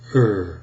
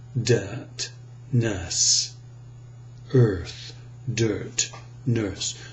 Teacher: lips are pursed forward a little bit of a kissing sensation perhaps a little bit of lip rounding